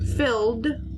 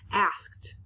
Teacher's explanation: it could be just a D sound like in filled or it can be the T sound like in asked